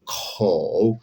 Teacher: Se pronuncia como una K del español, pero se exhala más. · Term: velar aspirada